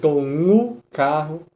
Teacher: Ele se reduz a um U de quão fraco esse o é